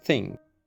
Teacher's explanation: But for TH, the tongue is extended through the teeth instead of hissing behind the back of the teeth. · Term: unvoiced TH